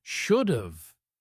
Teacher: Should have very often becomes should've, which sounds close to shoulda in relaxed speech. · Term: contractions